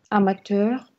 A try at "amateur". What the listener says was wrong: Amateur, не бойтесь R, amateur.